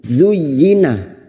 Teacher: Kadzalika zuyyina huruf zain, tarful lisan sejajar gigi seri bawah, zuy. Dan huruf zain yang berharokat duma ini masuk pada huruf ya, hanya masuk tanpa ditahan lama-lama, tanpa mendengung